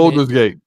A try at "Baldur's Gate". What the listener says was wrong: Baldur's. It's Baldur's Gate, not Boulders. Baldur's. Baldur's.